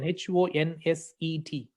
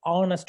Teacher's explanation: H is going to be silent, in which case the vowel sound starts with the O.